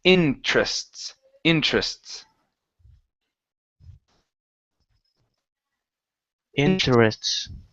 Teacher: we do not want to pronounce the e there in the middle. So instead of saying interests, it's interests.